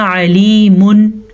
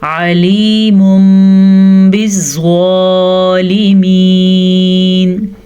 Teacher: تنوین کے بعد با آیا تو تنوین کو میم میں بدل دیا, اسی کو کہتے ہیں اقلاب.